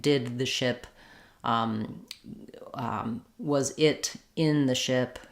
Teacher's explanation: The I, my tongue is a little bit lower and more relaxed. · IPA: ɪ